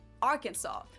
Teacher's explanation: It should be pronounced in 3 syllables with the final S silent, the A in each syllable with the Italian sound, and the accent on the first and last syllables.